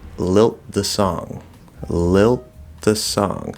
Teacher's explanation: So I'd probably still do a stop in between the two, but I'm not going into the T position. I'm going into the dental T position, which is a variation of the TH.